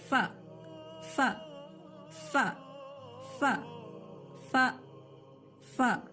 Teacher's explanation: ٹھیک ہے، سامنے کے دانتوں کے کنارے اوپر کے ہونٹ سے. ف، نیچے کا ہونٹ جو ہے نا اوپر کے دانتوں کو لگنا ہے